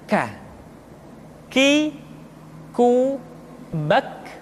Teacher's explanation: Diucapkan dengan mengangkat pangkal lidah kita ke posisi di depan huruf Qaf. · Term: huruf K